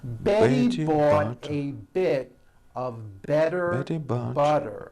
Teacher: all the T's are pronounced as D's because they fall between vowels.